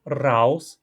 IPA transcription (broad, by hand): raws